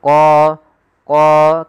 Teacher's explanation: Kemudian pada lafal qa di sini ada mad tabi'i yaitu qa. Tebalkan huruf qa-nya qa karena dia huruf isti'la yaitu pangkal lidah kita terangkat.